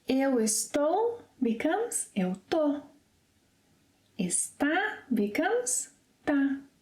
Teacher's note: shorten the verb 'estar' when conjugated in the present and past tenses by dropping the initial 'es' and in some cases making some other slight changes, for example, 'Eu estou' becomes 'eu 'to' 'está' becomes 'tá' 'estamos' -'tamos' Well, I've never heard 'tamos', but I've heard 'tamo'.